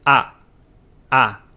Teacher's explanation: the sound you should be making is known as an open front unrounded vowel